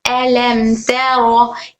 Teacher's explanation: अलम तरा, मीम के बाद ता बा मीम के अलावा आया तो इजहार शफवी, मीम की आवाज को बगैर गुन्ना करे पढ़ेंगे